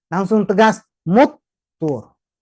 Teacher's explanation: Karena ini tasdid, berarti 2 huruf. Fauqakumut tur, mut, nggak boleh ada muntur, nggak ada dengungan.